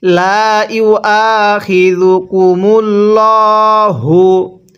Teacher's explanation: আল্লাহ শব্দের পূর্বে যদি এরকম পেশ থাকে তাহলে আল্লাহ শব্দটাকে পোর করে পড়তে হয়, অর্থাৎ মোটা করে পড়তে হয়।